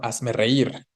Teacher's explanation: La tonicidad está en la última sílaba.